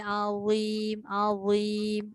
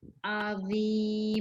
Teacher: Lidah keluarkan baru dia tak berdesir. Azim. Tu tak berdesir.